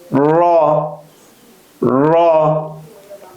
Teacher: আগার পিঠ এই অংশ উপরের তালোর সঙ্গে লাগিয়ে 10 নাম্বার মাখরাজ জিহ্বার আগার পিঠ উপরের তালুর সঙ্গে লাগিয়ে উচ্চারিত হয় · জিহ্বার আগার পিঠ উপরের তালুর সঙ্গে লাগিয়ে উচ্চারিত হয় র। রটা বলার সময় মোটা হবে, র।